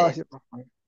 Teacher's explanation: আল্লাহ শব্দের লামের ডাইনে যদি জের আসে চিকুন করে পড়তে হয়, লা বলতে হয়।